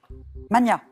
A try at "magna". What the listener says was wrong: En français, on entend souvent mania, et en fait, on doit le prononcer comme pour Magnus. Donc c'est Magna, même si on l'entend moins, hein, mais voilà.